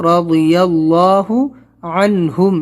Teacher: یہ ضاد ہے تو رضی اللہ موٹا کریں گے، اللہ سے پہلے زبر ہے تو رضی اللہ عنہم، یہاں پر عن نہیں کرنا ہے، جلدی پڑھنا ہے.